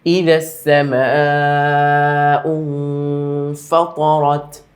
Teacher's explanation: 4 আলিফ টান আমরা দিলাম